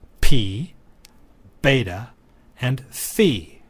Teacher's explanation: in all three cases the lips interrupt the flow of air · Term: labials